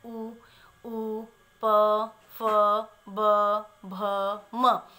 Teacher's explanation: ये होते हैं ओष्ठ, यानी कि जब हम इनको उच्चारित करते हैं, हम इनको बोलते हैं तो हमारी जिह्वा क्या, हमारे होठों का प्रयोग होता है, यानी कि बिना होठों की सहायता से हम इन वर्णों का उच्चारण नहीं कर सकते। ओष्ठ के द्वारा उच्चारित वर्णों को ओष्ठ कहा जाता है।